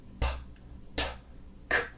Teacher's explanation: when you say a voiceless consonant, p, t, k, there's no vibration here. So that's one way that you can differentiate between the two.